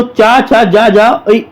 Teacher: चा वर्ग का उच्चारण स्थान जो है दोस्तों तालव्य है दोस्तों